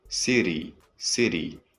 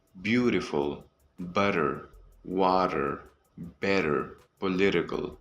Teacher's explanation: For example, we don't say city, we say city, city. It almost sounds like a soft D sound. This is called a flap T. You will see this flap T in many words like beautiful, butter, water, better, political.